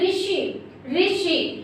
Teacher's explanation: तो आपने ऋषि बोला, आपकी जीभ झटके के साथ ऊपर लगी। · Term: मूर्धन्य